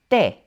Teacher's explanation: I usually hear English speakers pronounce it as soul, but it's shorter, like sol, sol. La letra T is almost pronounced like something between a T and a D.